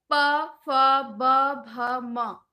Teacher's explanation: प, फ, ब, भ, म, ये प वर्ग में आते हैं, तो उच्चारण करने में ओठ का प्रयोग हो रहा है, ओठ आपस में चिपक रहा है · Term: ओष्ठ